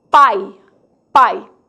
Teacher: a letra I representa uma semivogal, pois está apoiada em uma vogal na mesma sílaba